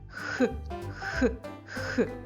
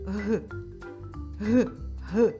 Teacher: обидва позначаються на звуковій схемії однією рискою А чим вони відрізняються звук х глухий А звук г дзвінки